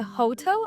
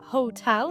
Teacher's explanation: Наголос на другий склад.